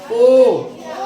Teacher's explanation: कंठ और ओष्ठ, जैसे ओ, आवाज देखो कंठ से आ रहा, और जैसे अगर मुंह को एकदम सीधा सीधे रख के बोलो, अगर बोल पाएंगे ओ तो नहीं हो पाएगा। ओ बोलने से हमारा ओष्ठ ऐसे ऐसे गोल करना पड़ता है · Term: कंठोष्ठ